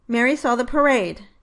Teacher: The word the is an article and, therefore, a function word and was pronounced with a reduced vowel. · it should receive primary sentence stress on the second syllable, because that is the stressed syllable in the word parade.